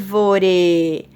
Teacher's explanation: O ar é a antepenúltima sílaba tônica e nos classificamos em proparoxítona